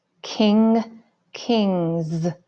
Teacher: the suffix S makes a Z sound